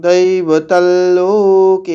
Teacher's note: অনস্বরটা ল এর মতো শোনাবে, অনুনাসিক ল, কেন পরবর্তীতে লোকে আছে